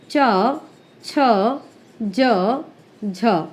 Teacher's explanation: वायु में बाधा उत्पन्न करते हैं जिसके कारण उन्हें निकलने के लिए कुछ संघर्ष करना पड़ता है, थोड़ी सी मेहनत करनी पड़ती है और इसीलिए इनको स्पर्श संघर्षी कहते हैं।